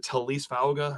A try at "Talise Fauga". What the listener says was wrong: I believe there's an extra syllable there, so I think it's a Taliesin or Taliesin. Taliesin. syllable.